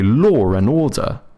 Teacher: if a word ends with a W and the next word starts with a vowel, sometimes they throw in a little R in there